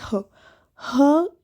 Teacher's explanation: ह बोलते ही लग रहा है कंठ से आ रहा है